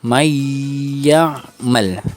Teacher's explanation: Cara membaca hukum bacaan idgham bi gunnah ini adalah seperti artinya memasukkan dengan dengung. Maksudnya huruf nun sukun atau harokat tanwin terbaca masuk ke huruf selanjutnya dengan cara didengungkan